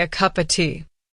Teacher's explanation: The of almost disappears. It becomes just a. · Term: reduced forms, reduced